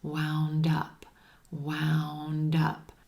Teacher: Wound up. Again, we have linking here with that final D in wound, linking over in front of the word up